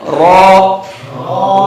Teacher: را کو ادا کرنے کے لیے زبان کا اگلا حصہ اٹھاتے ہیں، یعنی وہ مسوڑے کی طرف لے جاتے ہیں اور اسے کپ کپاتا ہوا رکھتے ہیں